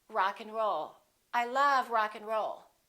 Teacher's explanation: In this case, we reduce the A and the D. Those disappear often.